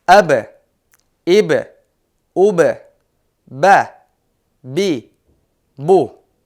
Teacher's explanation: Биринчиси ба жана мим тыбыштары. Бул тыбыштар айткан учурда эриндер эки эрин бири-бирине толук тийип жабылат.